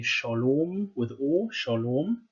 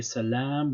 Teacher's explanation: in Hebrew we say shalom with O, shalom. Whereas in Arabic we would say salam with long A. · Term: Canaanite shift